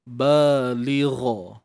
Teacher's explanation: Balighah. Huruf ghain ni angkat pangkal lidah kita, huruf isti'la. Kemudian matikan huruf ta ni dengan kita membunyikan huruf ha lah.